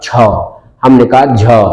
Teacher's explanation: छ और झ को बोलते समय एक जीवा पर रगड़न लग रही है, श्वास रगड़ने की अवस्था में बाहर आ रही है। तो जिन ध्वनियों को बोलते समय स्पर्शण तो होता ही है, श्वास तो मुख को टच कर रही है, लेकिन जीवा पर एक अतिरिक्त घर्षण लग रहा है, अतिरिक्त बल लग रहा है, उन्हें स्पर्श संघर्षी कहा जाएगा।